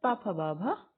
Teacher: ये होता है ओष्ठ, होंठों से बोलते हैं